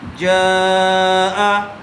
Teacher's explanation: حرف مدہ کے بعد حمزہ اگر اسی کلمے میں آ جائے تو مد متصل کا قاعدہ ہوگا، اس کو تھوڑا زیادہ کھینچ کر پڑھیں گے